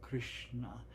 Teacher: When you've studied the alphabet and you see ka, very soft ka with ri underneath it, retroflex sha, retroflex na